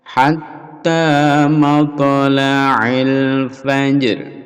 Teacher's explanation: Fajr ini qalqalah fajr. Fajr lalu ada ro dibaca setengah atau dibaca rendah.